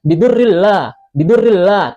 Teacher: Hukum bacaannya idgham bila ghunah dimasukkan tanpa didengungkan.